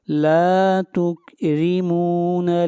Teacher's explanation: ایک الف کے برابر لمبا کریں گے لا کو، لا تکرمون، را کو باریک پڑھیں گے، را کے نیچے زیر ہے